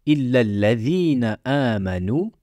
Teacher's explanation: il faut bien prononcer les deux l